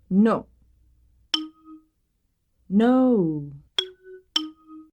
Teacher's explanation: in Japanese or Spanish the word no is to to our ear clipped or abbreviated